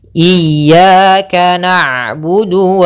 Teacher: Ain itu sifatnya bainiah bainiah Apa itu bainiah yaitu tengah-tengah antara dialirkan suaranya atau ditahan suaranya